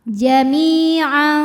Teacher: Maka cara baca tanwinnya adalah disamarkan, jadi tidak jelas N melainkan samar-samar. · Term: ikhfa hakiki